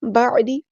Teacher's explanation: عین کو وسطی حلق یعنی مڈل تھروٹ سے ادا کرنا ہے، دال کی زیر کو لمبا نہیں کرنا۔